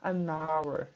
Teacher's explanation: Então o som do N vai juntar com o som do H e vai ficar na oralidade, como se fala, an hour